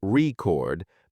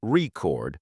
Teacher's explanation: first syllable record makes it a noun while stressing the second syllable record turns it into a verb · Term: word stress